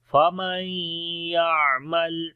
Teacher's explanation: کے بعد یا آ گیا، ادغام غنے کے ساتھ کریں گے، عین کے اندر صفت توسط ہوگی